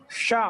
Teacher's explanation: మూర్ధ భాగంలో అది స్పర్శిస్తుంది కాబట్టి ఆ మూర్ధన్య సకారం ఉచ్చరిస్తాం